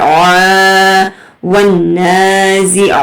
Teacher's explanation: آپ کی آواز جو ہے سکویز کر کے نکلے گی، رگڑ کر آئے گی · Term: عین